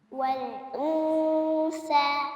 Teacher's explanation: Eh ngeluarin lidahnya dari [musik] awal. Jangan lidahnya di dalam dulu baru dikeluarin. Jadi sudah langsung ke makhraj tsa.